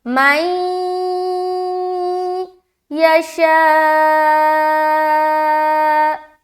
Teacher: غنے کے ساتھ ادغام کریں گے, ملاتے ہوئے غنہ کرنا ہے. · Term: ادغام ناقص